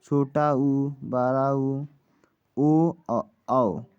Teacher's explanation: और मध्य स्वर, जीव के मध्य वाले भाग से बोले जाने वाले स्वर को मध्य स्वर कहते हैं, इसमें आता है। और एक होता है पक्ष स्वर, जीव के पीछे वाले भाग से बोला जाता है। जो इनमें से जो बचता है, जैसे आ हो गया, छोटा ऊ, बड़ा ऊ, ओ और औ, इन सभी को हम क्या पक्ष स्वर से बोलते हैं, जीव के पीछे वाले भाग से बोलते हैं।